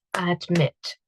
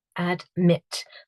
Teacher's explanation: the IT at the end is the syllable that is stressed